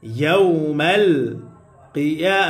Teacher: ইয়ার উপরে খারা জবর আসার কারণে এক আলিফ টান হবে মাদ্দে তবাই। খারা জবর খারাজের উল্টা পেশ হইলে এক আলিফ টানিয়া পড়িতে হয়, ইহাকে মাদ্দে তবাই বলে।